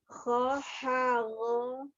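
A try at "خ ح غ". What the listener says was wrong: Dibuka lagi mulutnya. Jangan mengikuti aliran pasrah ya, jangan mengikuti aliran pasrah, maksudnya kho ha go, nah itu pasrah, tidak dibuka juga tidak diangkat, tapi kho ya, harus diperjuangkan. Kho ha go, ada perjuangan membuka rongga mulutnya.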